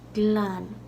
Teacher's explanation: the L there is slender, so it's not like a hard, full L like glan. It's glan.